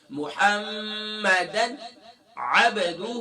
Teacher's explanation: اب یہاں پر تنوین کے بعد عین آ گیا تو یہاں پر اظہار ہوگا، یعنی کہ غنہ نہیں کہنا